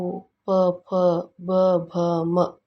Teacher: ಅಕ್ಷರಗಳು ತುಟಿಗೆಯ ಸಹಾಯದಿಂದ ಹುಟ್ಟುತ್ತವೆ ಇವನ್ನು ಓಷ್ಟೋ ವರ್ಣಗಳೆಂದು ಕರೆಯುತ್ತೇವೆ